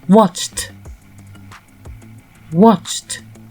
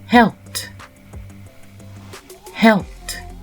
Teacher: Cuss devient cussed. Donc le ED se transforme en T. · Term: Le ED qui se prononce T